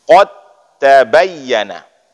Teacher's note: Maka hilangkan dal. Hilang dal langsung masuk ke dalam huruf ta.